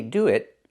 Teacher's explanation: we're using a stop t which is a stop consonant. This is also not correct.